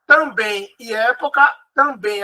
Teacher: também a mais forte é a última, então ela é oxítona